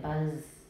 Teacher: Voicing only goes halfway through the final obstruent, but please don't forget the first half is still voiced. The length of the vowel is even more important, but please voice the first half, okay?